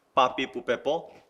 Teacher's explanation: 입술을 완전히 튕깁니다. 굉장히 긴장을 시켜서 튕기듯이 발음을 합니다.